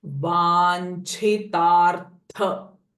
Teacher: Tha is also mahaprana sound and ra sound before tha. Vanchitartha, and because it's starting with pradayini, pressing sound.